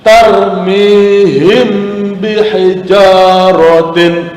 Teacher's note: ada mim mati bertemu dengan huruf ba' yang lain tarmihim bihijaratim tetep didengungkan tetapi dengan cara menyembunyikan huruf huruf mim atau menyamarkan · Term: ikhfa safawi